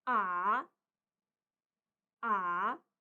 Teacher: lalu ton tiga kita baca turun dan naik